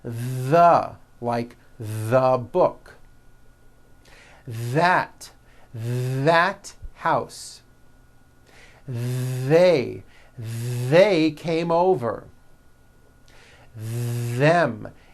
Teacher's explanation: they should all be voiced and all made with your tongue coming through your teeth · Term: voiced th sounds